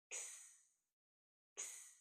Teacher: The next letter is X, another voiceless sound, and we make this sound by putting two letters together, K and S. This letter makes the sound X, X.